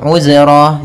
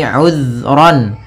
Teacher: hati-hati dalam pelafalan zal, usahakan di sini jangan sampai memantul